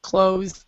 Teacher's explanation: It's the same pronunciation in American English. But in British English, then you have the th sound for this word.